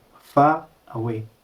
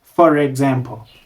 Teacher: in many accents an R links when the next word starts with a vowel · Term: Linking with R